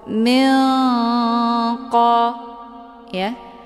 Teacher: Nun posisinya di ujung lidah, sementara qaf posisinya di pangkal lidah. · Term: ikhfa ab'ad